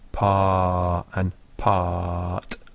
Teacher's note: the vowel is so long that the extra bit of sound that comes from the consonant doesn't really make much difference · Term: naturally long